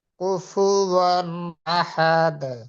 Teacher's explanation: এখানে নুন সাকিন তানবিনের পরে হামজা, একদম দ্রুত তাড়াতাড়ি পড়তে হয় ইজহারের কায়দা, তাই না? গুন্না ছাড়া স্পষ্ট করিয়া তাড়াতাড়ি পড়িতে হয়